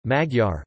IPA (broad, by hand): mɒɟɒr